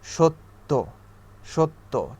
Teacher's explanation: শেষের বর্ণটাকে 2বার উচ্চারণ করতে হয় জ ফলা যখন আমরা ব্যবহার করি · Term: দ্বিত্ব উচ্চারণ